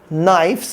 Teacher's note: não se pronuncia o K